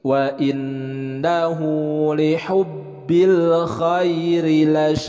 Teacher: dalam pelafalan huruf Kho ini adalah harus jelas seperti ada seraknya · penekanan di dalam huruf ba-nya karena ada tasydid double